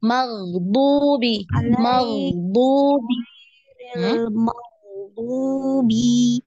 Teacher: diingat huruf ghain ini dialirkan juga ya. Punya sifat rokhwa.